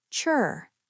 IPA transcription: tʃr